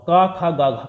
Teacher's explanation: और का खा गा घा का होता है किससे, कंठ से उच्चारण होता है